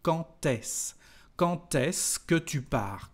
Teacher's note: For example, here we've got a liaison between the word quand and s, and when we've got a d, the pronunciation is like a t.